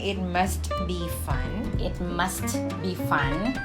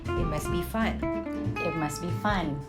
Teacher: So instead of saying it must be fun, it must be fun. Yeah, you can just or simply drop the T sound or like do a reduction on that and just say it must be fun.